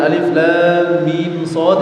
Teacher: lam mim shadnya sama-sama dibaca enam harakat ya namanya ini namanya mad lazim harfi namanya ya jadi dan